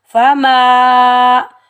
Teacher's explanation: آگے الف خالی سے پہلے میم کے اوپر زبر، الف مدہ، ایک الف کی مقدار کھینچ کر ادا کریں گے۔